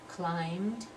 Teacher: that B is not pronounced so we have the M sound